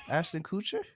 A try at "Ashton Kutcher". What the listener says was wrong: Why are you putting emphasis on the coup? Ashton Kutcher. Kutcher. Kutcher. Kutcher.